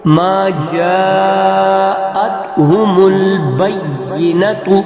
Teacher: جیم کو 5 الف کے برابر ہم لمبا کریں گے کیونکہ مدہ آ گئی ہے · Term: موٹی مدہ